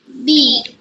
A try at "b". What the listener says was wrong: না, এটা ব। বি তো আমাদের লেটার, কিন্তু আমরা সাউন্ড পড়ছি, তাই না? এই যে ব্র্যাকেটের মধ্যে যখন থাকবে তখন সাউন্ড হয়ে যাবে। ব।